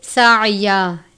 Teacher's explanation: ہیں، تنوین کے بعد وقف مطلق ہے یعنی ٹھہرنا لازم ہے، وقف کی صورت میں ایک زبر ہٹا کے الف کی طرح پڑھیں گے